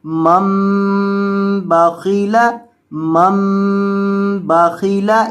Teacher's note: یہ چھوٹی میم جہاں بھی آ جائے وہاں اس کو گنہ کر کے پڑھا جاتا ہے، یعنی یہ جو چھوٹی سی میم نون کے اوپر لکھی جاتی ہے اس میم کے اوپر ہمیشہ گنہ کر کے ہی پڑھا جاتا ہے، یعنی یہ میم جہاں بھی ہو اس کو گنہ کیا جاتا ہے، تو یہاں بھی اس کو گنہ کریں گے کیونکہ یہ چھوٹی میم ہے۔